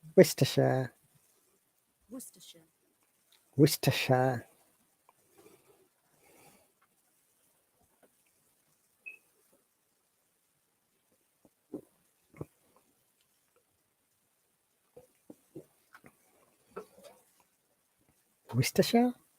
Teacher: Worcestershire. Looks like there is no R. Worcestershire. And there is no O. The O and R becomes U sound. And it is pronounced Worcestershire.